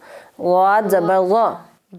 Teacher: غاد زبان کی سائڈ لگائیں اوپر والی داڑھوں سے